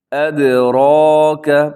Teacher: اب یہاں را کے اوپر حرکات ہیں تو اب را موٹی پڑی جائے گی۔ ادراک، لوگ عام طور پہ پڑھ دیتے ہیں ادراکا، ادراکا نہیں ہے بلکہ ادراک۔